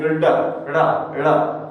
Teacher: जब हम उनका उच्चारण करते हैं, जब हम इनका उच्चारण करते हैं तो वायु जो हमारी जिह्वा होती है वो एक झटके के साथ नीचे गिरती है, झटके के साथ, जैसे ड ड़ा झटका सा महसूस होता है हमारी जिह्वा को, इसलिए हम इनको उच्छिप्त व्यंजन कहते हैं। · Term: उत्क्षिप्त व्यंजन